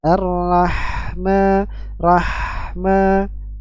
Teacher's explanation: mim fathah Peru kita perhatikan pada ha sukun di sini ya Ha sukun memiliki sifat rakah suara mengalir dan hams nafas mengalir dalam jumlah yang besar